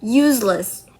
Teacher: So in the word useless, the stress, it remains on the first syllables, which is use. The first word, use, which is the base word.